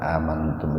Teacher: Amantum ihfa akrab itu nun mati ketemu dengan ta, dibaca samar tapi sepintas saja. Akrab itu qorib, dekat itu identik dengan sebentar, sepintas.